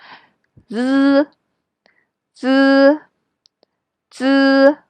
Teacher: remember to pronounce it a little bit longer than the English pronunciation z